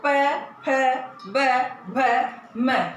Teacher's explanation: ये पूरे के पूरे व्यंजन होठ से बोले जाएंगे